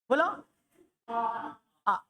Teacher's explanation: तो आप देखना एक शब्द बोले विव्रत के लिए, आ, बड़ा आ बोलो, बोलो आ में लगभग पूरा मुंह खुल रहा है